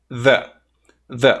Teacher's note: Lembrando que este símbolo aqui é o TH vozeado, ok? Então, você finge que vai falar o Z, Aí você coloca a língua entre os dentes